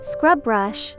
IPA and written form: skrʌb brʌʃ (Scrub Brush)